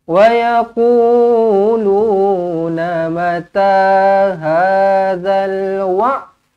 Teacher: Huruf ain tekankan dekat tengah-tengah kerongkong.